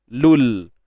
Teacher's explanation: Jadi huruf mat ataupun kita kata sukun bertemu sukun tak boleh baca kan? So huruf waw mat ni digugurkan bunyinya. So lam dari depan tu terus masuk pada lam yang sukun.